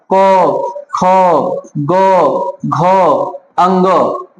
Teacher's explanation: इनका उच्चारण कंठ से होता है, इनको क वर्ग कहते हैं